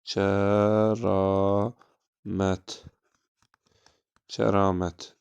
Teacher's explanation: A uzun tələffüz olundu, həmçinin nədir? Həm açıqdır, həm də ki, qalındır.